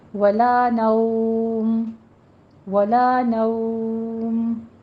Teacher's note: مد لین عارض ہوگی جس کو آپ نے 3 سے 4 حرکات کے درمیان وقف کرنا ہے